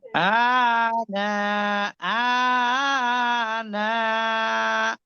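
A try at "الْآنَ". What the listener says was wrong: না, টান তো নেই, আর টেনে লামকে ধরেন আল আনা।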